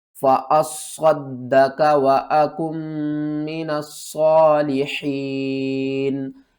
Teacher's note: یہاں پر بہت سے لوگ اس کو پڑھتے ہیں فَأَصَّدَّقَ، تو آپ یہاں پر دیکھیں تو الف کے اوپر زبر ہے، اس کو ہم نے صاد کے ساتھ ملا کر پڑھنا ہے۔ فَأَصَّد، صاد کو بھی 2 بار پڑھنا ہے، دال کو بھی 2 بار پڑھنا ہے، اور صاد کو موٹا کر کے پڑھنا ہے، دال کے اوپر ایک بار قلقلہ کریں گے، دوسری بار زبر کے ساتھ پڑھیں گے۔